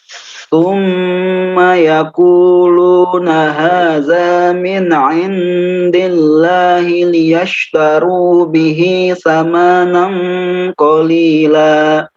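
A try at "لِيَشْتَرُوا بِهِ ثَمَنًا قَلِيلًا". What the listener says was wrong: Diulang, liyashtaru bihi samanan, sa-nya pendek. Mimnya pendek juga. Samanan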